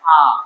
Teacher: আ উচ্চারণ করতে কোন জায়গায় বাধা প্রাপ্ত হচ্ছে না। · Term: স্বরধ্বনি